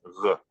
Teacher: And plain G we think is a voiced fricative.